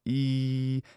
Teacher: with me now we have the nice e sound which has our jaw and our tongue are high so it's a high vowel it's front